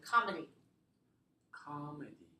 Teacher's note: three syllable stress the first syllable